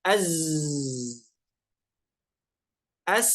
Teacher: pondasi huruf shad zaisin ini yaitu berada pada ujung lidah bertemu dengan gigi seri bagian bawah